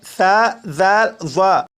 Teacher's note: زبان کی نوک جب اوپر والے 2 دانتوں کے سرے سے لگے تو اس سے ثا، ذال، ظا ادا ہوتے ہیں۔